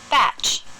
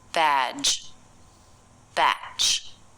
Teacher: ending of batch is stronger batch that's not the only difference the unvoiced ending also makes the vowel a little bit shorter badge batch they don't sound quite the same first of all